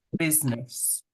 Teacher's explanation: that I in the middle of the word is not spoken out loud, we don't hear it when we say it